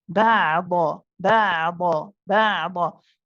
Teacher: The ain is a tawassut letter. It's the one which is not too long, not too short. And so we hold the ain, but not for too long.